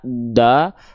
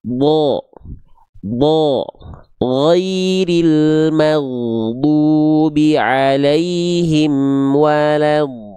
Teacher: Huruf dod adalah huruf yang tebal. Ketika huruf dod dia berharakat baris atas, maka dia enggak dibaca dengan vokal a da. Tapi dia dibaca akan terdengar seperti vokal o. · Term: huruf tebal